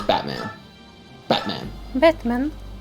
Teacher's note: You don't actually say the T, it's Batman. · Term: glottal stop